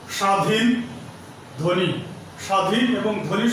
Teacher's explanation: শব্দের শুরুতে যদি ব ফলা থাকে তাহলে সেই বয়ের উচ্চারণ হয় না।